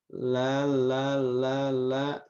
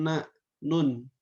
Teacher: posisi ujung lidahnya agak di bawah sedikit dari makhroj lam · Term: huruf nun